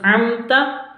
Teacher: mim sukunnya juga jelas karena bacaan izhar safawi, mim sukun berjumpa dengan ta